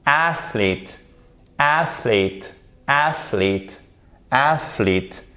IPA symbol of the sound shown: iː